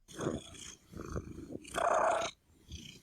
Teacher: during the inhalation phase it's just purring so it's softer and voiceless